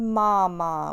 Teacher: When you say mama, your tongue's low. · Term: hard